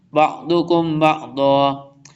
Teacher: ضاد ہے، full time موٹا پڑھیں